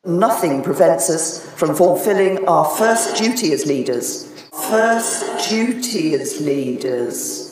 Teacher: This change from dir to j is called yod coalescence. You can hear Theresa May use the j pronunciation.